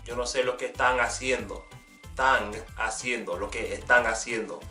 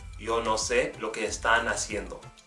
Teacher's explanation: In the parts of Colombia where they have a more Caribbean accent, the N at the end of a word will become more like an NG, kind of nasally